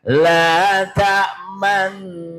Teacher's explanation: Bacaan ismam. Jadi di saat mendengungnya nun itu kedua bibir digerakkan ke depan hanya satu harokat, satu gerakan dan tidak boleh panjang.